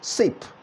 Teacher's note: It is voiceless, the first one, because there is little or no vibration at all noticed in your vocal cord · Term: voiceless sound